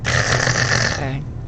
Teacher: The back of your tongue is almost closing and you're pushing air through, but it might take a little more effort, and it should, because like I said for the other one, you should practice the big, over the top, loud version. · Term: hiss